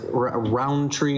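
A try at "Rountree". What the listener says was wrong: There's no even D. No.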